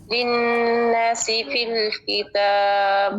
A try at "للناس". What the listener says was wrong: ناسی الف مدہ ہے للناسی. للناسی نہیں کریں گے لنا نا منہ کھولیں گے. ایک تو الف مدہ ہے لمبا بھی کریں گے اور ساتھ میں منہ کھولیں گے للناسی.